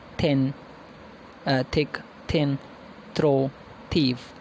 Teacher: These are the sounds formed by putting the tongue between the teeth. Inter means between, dentals means teeth. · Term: interdentals